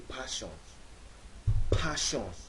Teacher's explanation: his rhythm is more syllable timed which means when he speaks English his syllables are more similar in length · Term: Nigerian accent